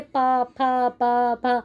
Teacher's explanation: बोलकर देख लीजिए, पा फा पा फा। ओष्ठ की आपके ओष्ठ जो है ऊपर नीचे हिलेंगे, एक दूसरे से जुड़ेंगे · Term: ओष्ठ्य